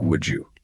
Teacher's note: end of would often shifts to a D, to match the J at the beginning of you. So it comes out sounding like would you.